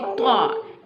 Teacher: Ta pronounced from the tip of the tongue touching the roots of the top two front teeth.